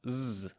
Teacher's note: Make the sound z like a B. You should feel vibration. This means you're adding voice. It's a voiced sound.